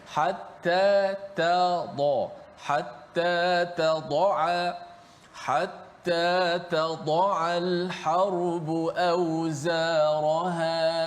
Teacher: huruf ta di hujung lidah huruf dad ah di bahagian tepi lidah huruf ain di bahagian tengah halkum